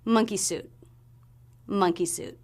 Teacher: So the word suit has the S consonant sound. The letters U-I represent the U as in boo vowel, and we finish with a stop T.